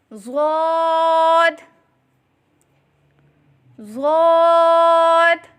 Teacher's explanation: زبان کی کروٹ اور اوپر کی داڑھوں کی جڑ سے ادا کریں